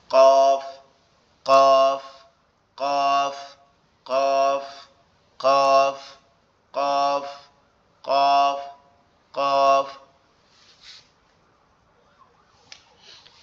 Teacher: কফ হচ্ছে জিহ্বার গোড়া উপরের তালুর সঙ্গে লাগবে, লেগে উচ্চারিত হবে